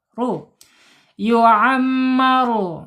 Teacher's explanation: ro-nya tebal karena harokatnya domah ya. Yu'ammaru, ru ya gitu ya, nggak boleh yu'ammaru nggak boleh, harus ditebalkan ya, harokatnya domah. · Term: ro tebal